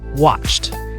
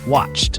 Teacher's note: The final ed is pronounced t when the verb ends with an unvoiced sound. Now these are sounds where your vocal cords don't vibrate.